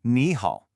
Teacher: It's made of 2 third tones, ni and hao. But when you have 2 of those third tones in a row, the first one actually changes to a rising second tone